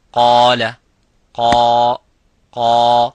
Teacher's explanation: the alif is mufakham, it is a heavy because of the qaf. So whenever the letter is heavy, you make the letter alif qaf, the letter alif of mad heavy.